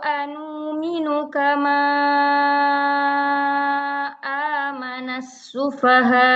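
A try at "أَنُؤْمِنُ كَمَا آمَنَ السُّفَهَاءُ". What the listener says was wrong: As-sufahanya agak kurang agak bentar loh, as-sufahanya kurang isba sedikit lagi ya. As-sufaha biasanya di mat-mat seperti ini ya akhir itu biasanya ikangin aman. As-sufahanya saja, as-sufaha coba. Nah, ya kenapa biasanya kurang ikmal? Karena sudah akhir, nafas pun sudah sedikit, jadi biasanya sudah tidak bisa menyempurnakan.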